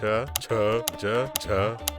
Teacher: ನಾಲಿಗೆಯು ಬಾಯಿಯ ಮೇಲ್ಚಾವಣಿ ಅಂದರೆ ತಾಳವನ್ನು ಮುಟ್ಟಿದಾಗ ತಾಲವ್ಯ, ಪಲಾಟಲ್ ಎಂಬ ಅಕ್ಷರಗಳು ಹುಟ್ಟುತ್ತವೆ.